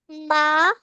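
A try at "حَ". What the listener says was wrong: माँ नहीं, हा है ये, हा जबर हा। हा बोले।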